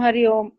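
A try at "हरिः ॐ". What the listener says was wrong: It is not Hari Om. It's Harihi Om. Yeah, the Harihi, the Visarga is important.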